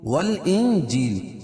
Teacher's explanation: والانجیل یہاں بھی اخفاء حقیقی کیونکہ نون ساکن کے بعد حروف اخفاء کے 15 حرفوں میں سے جیم ہے تو یہاں ناک میں آواز کو چھپا کر پڑھیں گے